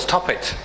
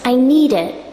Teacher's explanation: When we say stop and then it, there is no pause.